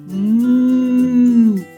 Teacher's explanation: нам потрібно щільно зімкнути губи і повітря що повинно виходити з нашого ротика не може знайти вихід тому воно виходить через ніс а потім коли ми розмикаємо губи виходить залишки повітря а зараз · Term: звук м